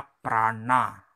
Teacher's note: anuswaranya adalah na, ini tebal ya, ujung lidah diangkat, na. Contohnya prana, nah ini ujung lidah diangkat.